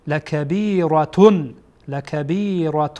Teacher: بعد از تنوین حمزه آمده بنا در اینجا هم لبیرة لبیرة تنوین را کاملاً ظاهر می‌کنیم آشکار